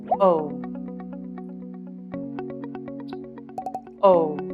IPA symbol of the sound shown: o